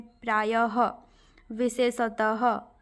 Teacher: विसर्ग जो है किसका अघोष रूप है ह का ठीक है विसर्ग का उच्चारण शब्द के अंत में तथा उपसर्ग के अंत में ह होता है · विसर्ग ह का अघोष रूप है इसको याद रखिएगा विसर्ग जो है किसका अघोष रूप है ह